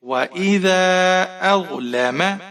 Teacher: حمزہ کو ضا کے ساتھ ملائیں گے، ضا موٹا حرف ہے، موٹا کر کے پڑھیں گے